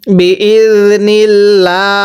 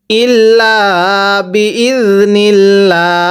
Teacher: এই যে আল্লাহ শব্দের পূর্বে যদি এরকম জের থাকে, আল্লাহ শব্দটিকে লা করে পড়ব, চিকন করে।